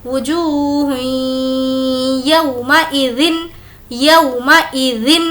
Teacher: ہمیں ہا کو یا سے ملانا ہے اور یہاں پر غنہ بھی کرنا ہے کیونکہ تنوین کے بعد یا، واو، میم، نون جس کا مجموعہ یومن ہے، ان چاروں حروف میں سے اگر کوئی لیٹر آئے تو اس وقت ہمیں غنہ کرنا ہے، اسی لیے ہم یہاں پر تھوڑی دیر ناک میں آواز کو روک رہے ہیں۔